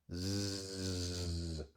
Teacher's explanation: La Z se pronuncia como la Z en inglés, claro. Es como una S, pero igual con vibración de las cuerdas vocales. Zzz. Es el sonido del zumbido de la abeja.